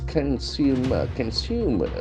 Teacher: the accent falls on the second syllable consumer can see the stress is on the second syllable consumer